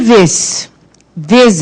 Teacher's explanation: só que agora não é o agudo, é o acento circunflexo, porque o som é fechado.